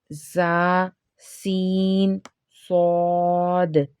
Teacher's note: ان کو ادا کرتے وقت سیٹی کی طرح تیز آواز نکلتی ہے، اس لیے ان حروف کو حروف صفیریہ یعنی سیٹی والے حروف کہتے ہیں